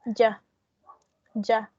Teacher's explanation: in the second one, you have the schwa. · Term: weak form